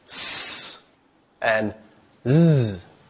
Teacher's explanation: the blade of the tongue is just near that alveolar ridge